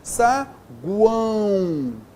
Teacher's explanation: semivogal u, vogal an, semivogal u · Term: tritongo nasal